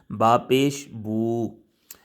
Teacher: اور جب پیش پڑھیں گے ہونٹوں کو گول کریں گے، آواز سامنے جائے گی